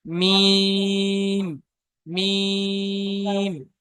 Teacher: দ্বিতীয় ময়তে গিয়ে আওয়াজ পুরো থেমে যাবে আর আওয়াজকে ধরে রাখা যাবে না